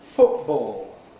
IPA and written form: ˈfʊʔbɔːo (football)